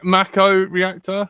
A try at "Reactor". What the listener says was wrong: Reactra. You're putting emphasis on the wrong syllable. Reactra.